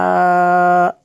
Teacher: میم شدد ہے یہاں پہ غنہ ہوگا